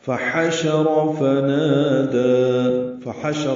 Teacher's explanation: ہا وسط حلق سے ادا ہوگا، را پر پڑھیں گے، اور نون کے بعد الف ہے تو نا الف مدہ، دال پر کھڑ زبر ہے تو دو حرکات یہ بھی لمبا ہے.